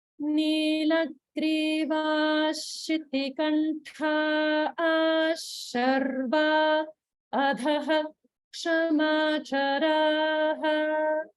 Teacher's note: And if you remember, that rule is there with the Visarga followed by Ksha, conjunct. We pronounce the Visarga fully instead of like a half Visarga.